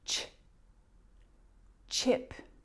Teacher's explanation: That sound, ch, is a combination of the t and sh.